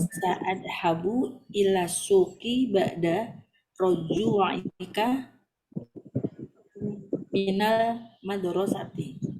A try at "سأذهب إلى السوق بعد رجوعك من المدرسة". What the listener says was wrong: جيد، فتح الله عليك.